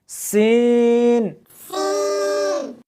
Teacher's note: اس حرف کو جب پڑھیں گے تو سیٹی کی آواز آنی چاہیے